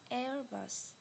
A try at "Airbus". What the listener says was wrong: Not L. Airbus. Airbus.